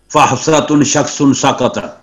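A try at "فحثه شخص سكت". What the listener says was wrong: اچھا تم تا کہاں سے لے آئے ہیں آپ؟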